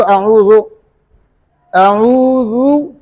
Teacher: मुकम्मल अदा करने का मतलब है कि ज़ाल को मामूली सा खींच ले, एक हलीफ के बराबर नहीं। ये बात याद रखना, हुरूफ मद्दा की तरह इसको नहीं खींचना है, लेकिन पेश को अदा करने के लिए, मुकम्मल अदा करने का तरीका यह है कि मामूली से उसको आप खींच ले। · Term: पेश को मुकम्मल अदा